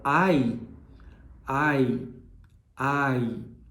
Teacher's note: Quando a gente fala ai, ai, ai, começa aberto e termina fechado. E aí, mais uma vez, é o movimento da mandíbula, o movimento da língua, o movimento dos lábios que vai fazer essa diferenciação de som.